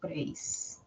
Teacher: No es la I la que tiene la mayor fuerza de voz, es la E. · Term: diptongo